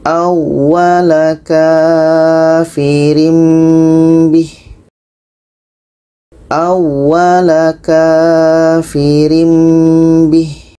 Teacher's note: Ini tanwin bertemu dengan ba. Kita baca dengung.